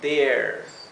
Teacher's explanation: vocal larga cuando tenemos la a la r y la e se pronuncia e como si fuera una vocal bien larga